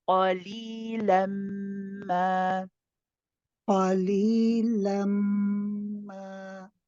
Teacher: You want to hear this ah sound even when you do the idgham, when you say la, when you say lamma, qalilamma.